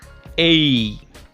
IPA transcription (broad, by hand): eI